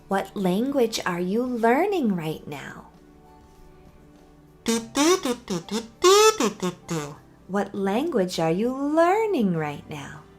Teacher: Did you hear how it went up and back down because I added the wh- word at the beginning? · I'm going to actually raise and then lower my voice. So, tip number 10 is: for wh- questions, rise and fall.